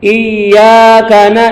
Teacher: ada nun mati bibir dibuka